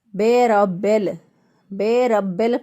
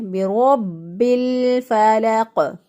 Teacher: بے ربل کر کے پڑھتے ہیں تو یہ مجہول ادائیگی ہو جائے گی، غلط ہو جائے گا